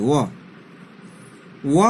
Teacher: व का उच्चारण स्थान है वो दंत और ओष्ठ दोनों है। तो इसे हम लोग दंतोष्ठ कहते हैं।